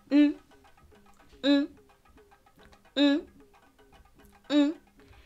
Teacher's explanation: When ni is serving as a vowel, it becomes ng.